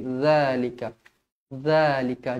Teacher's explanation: Nampak ni ada alif kecil dekat sini, mad asli dua harakat. Zalika, huruf zal, pastikan lidah kita terkeluar sedikit